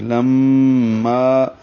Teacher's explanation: ولما یہ لم میں غنہ ہے، آواز ناک میں لے جائیں گے، 2 حرکات تک ٹھہرائیں گے. لما الف مدہ ہے، 2 حرکات لمبا کریں گے الف کے برابر